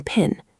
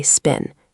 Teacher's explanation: Pin has a puff, spin doesn't.